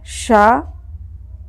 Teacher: इसको तालव्य श बोलते हैं, तालव्य शकार। और इसका उच्चारण स्थान क्या है? तालु।